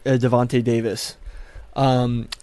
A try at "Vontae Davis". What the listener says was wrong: It's Vontae Davis. You said Devontae. Devontae Davis.